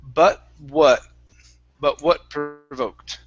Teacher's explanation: this T cannot be a flap T